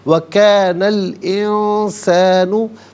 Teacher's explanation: وَكَانَ الْإِنسَانُ، نون پر زبر ہے، اسے الانسانوں کے لام ساکن کے ساتھ ملائیں گے، درمیان میں سے الف یعنی حمزہ کو حذف کریں گے۔ انسانوں میں نون ساکن، اس کے بعد سین حرف اخفا ہے تو نون ساکن کو اخفا کے ساتھ ادا کیا جائے گا۔